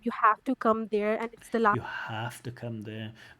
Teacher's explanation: going into direct speech changing her intonation to show that she's in direct speech putting that extra stress on you have to go there um